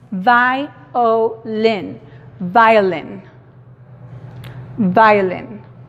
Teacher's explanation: escuchamos la I, tiene su sonido largo, escuchamos la O con su sonido corto y la I con su sonido corto. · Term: monoptongo